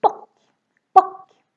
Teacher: Here the O is really, really short because we have two consonants coming after, more than one.